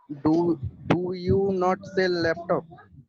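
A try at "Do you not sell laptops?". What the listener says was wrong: Very good. Very good.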